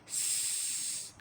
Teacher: In s sound, you see that the air keeps on releasing.